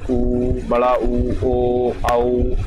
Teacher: ऐसे स्वर जिनके उच्चारण में होठ का जो आकार है वो गोल हो जाता है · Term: वृत्ताकार स्वर